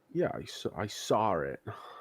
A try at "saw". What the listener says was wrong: No, get rid of the R sound. There's no R in saw. There's no R in saw.